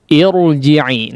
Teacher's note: huruf ra sukun yang didahului oleh huruf yang berharakat kasrah tapi kasrahnya aridah, kasrah bukan asli, maka ditebalkan